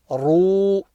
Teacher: Here the ra will be read full mouth because it's got that inverted dhamma on top of it.